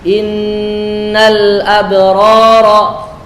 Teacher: dengan mendengungkan dengan dengung yang paling sempurna, dengung yang lama.